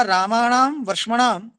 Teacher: मूर्धन्ययोः रशयोः प्रयत्न महिम्ना दन्त्यो नकारो मूर्धन्यताम आपद्यते। रामाणाम में र और वर्ष्मणाम में श, इनकी प्रयत्न महिमा से जो दंत्य न है, रामा नाम का जो न, वर्ष्मनाम का न, वो मूर्धन्यताम णत्वम आपद्यते, वही णत्व को प्राप्त होता है।